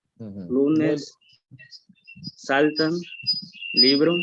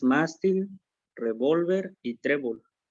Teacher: Tienen la mayor intensidad en la penúltima sílaba y lleva tilde cuando no terminan en N, S o vocal. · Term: Graves